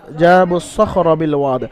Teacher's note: জিমের উপর যাবার আলিফ মাদ্দা এক আলিফ পরিমাণ টান দিয়ে পড়তে হবে জিমকে